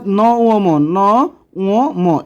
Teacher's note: যেসব স্বরধ্বনি ব্যঞ্জন ধ্বনিগুলো উচ্চারণের সময়ে ফুসফুস থেকে আগত বাতাস অর্থাৎ আশা বাতাস মুখের মধ্যে প্রথমে বাধাপ্রাপ্ত হয় এবং নাক ও মুখ উভয় দিকে বেরিয়ে যায় সেগুলোকে নাসিক্য ব্যঞ্জন বলা হয়।